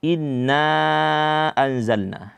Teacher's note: hukumnya adalah Mad Jaiz munfasil yang panjangnya itu 4 atau 5 harakat